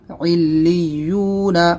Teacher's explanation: یہاں پر لام کے اوپر تشدید اور یا کے اوپر تشدید، تو عین کو لام سے ملائیں گے، لام کو یا سے ملائیں گے، دونوں میں سختی کریں گے۔ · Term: تشدید مع تشدید